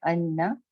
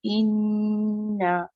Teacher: اگر آپ مخرج کو ٹچ کے انا، آپ اس طرح بولتے ہیں انا، تو آپ مخرج کو ٹچ کر کے ہٹ گئے، اور یہ آپ کا صرف ایک نون ادا ہوا۔ دوسرے نون کو ادا کرنے کے لیے آپ کو اسٹریچ کرنا ہوگا، مطلب اس میں ٹھہر کے تھوڑی دیر ٹھہرنا ہوگا تاکہ دونوں نون ادا ہو جائیں